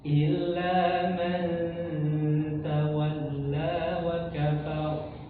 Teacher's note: kalau ee huruf ro didahului fathah maka tebal ya